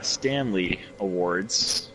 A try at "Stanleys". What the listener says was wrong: Are you saying Stanley or Stan Lee? There's a difference. sounds like he's saying Stanley, not Stan Lee. sounded different. You hear the difference? There's a difference. Stan Lee. Stan.